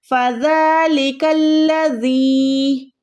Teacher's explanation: अब यहाँ पर कुछ लोग क्या करते हैं, फ़ज़लिकल्लज़ी زال کو جو ہے کھڑی زبر کو ادا ہی نہیں کرتے، ایک زبر لگا دیتے ہیں، تو وہ رونگ ہوتا ہے۔ جب بھی کھڑی زبر آتی ہے آپ نے اس کو کھینچنا ہوتا ہے، یہاں پر آپ نے زال کو کھینچنا ہے